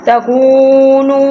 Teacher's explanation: یہ کو نو پہلا پیش والا، دوسرا واو ساکن ہے، اسی طرح نون کے اوپر پیش اور دوسرا واو ساکن ہے، اس لیے ہم ان دونوں کو لمبا کریں گے